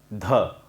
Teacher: द में हम लिखते हैं डी, ध में हम लिखते हैं डी एच, ठीक है। तो द को बोलते वक्त हम जब ह का उसमें उच्चारण मिक्स करते हैं तो वो होता है ध